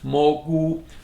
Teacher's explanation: So it's Mo rising and Gu high tone